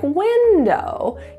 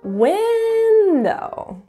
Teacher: you'll hear that up and down pitch within each syllable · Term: slide